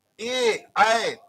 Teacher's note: और ये पांचवा है, जब हम कहेंगे ए तो ये कंठ तालव्य, कंठ तालव्य, कंठ तालव्य, इसका इन वर्णों का है ए का उच्चारण स्थान कंठ तालव्य होगा